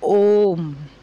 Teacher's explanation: जिन स्वरों के उच्चारण में ह्रस्व स्वरों के उच्चारण से तिगुना समय लगता है उन्हें प्लुत स्वर कहते हैं। उदाहरण है ओम।